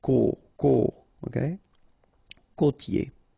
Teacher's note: Côtier, okay, so here you get this O, accent circumflex, you tend to insist a little bit more on it, so it's a bit lower